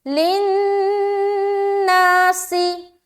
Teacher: لن میں نون مشدد کا غنہ اور پھر الف مدہ